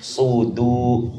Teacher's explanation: Kita betul-betul jaga sifat sadnya yang tebal dan dalnya yang murakkab, yang tipis. Sudu. Minal ji itmamul harakah jarrul fakki ila al-asfal. · Jangan pengucapkan subu. Jangan sampai huruf dal makharajnya tergelincir menjadi dha dikarenakan tebalnya huruf sad.